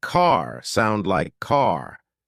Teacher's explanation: American accent often uses a strong R sound words like car sound like car British accent tends to soften